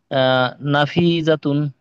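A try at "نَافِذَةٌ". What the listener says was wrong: নাতে টান হবে, নাফিজাতুন।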